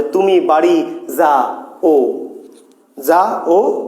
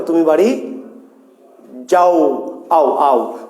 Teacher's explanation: দুটি স্বর যুক্ত অবস্থায় নাই, পাশাপাশি বা কাছাকাছি আছে, কিন্তু উচ্চারণ করতে গিয়ে এক নিঃশ্বাসে একত্রে উচ্চারণ করতে হয়। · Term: যৌগিক স্বরধ্বনি